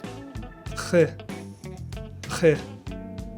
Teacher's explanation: Think a soft gargling sound. H, but from the back, not from the front of the mouth. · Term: French R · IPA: /ʁ/